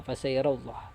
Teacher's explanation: Bacaannya adalah huruf lam dibaca tafkhim, tebal. Sebabnya lafal jalalah didahului fathah.